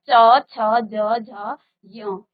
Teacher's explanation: जहां आपकी जीभ स्पर्श करेगी वो स्थान आपकी मुख के अंदर तालू है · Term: तालव्य